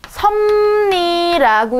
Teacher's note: 자, 두 개의 섭, 리 이렇게 발음하기 힘들기 때문에요. 우리 발음하기 쉽도록 니은과 미음으로 바뀌어줬어요. 자, 이거 비음화라고 그래요.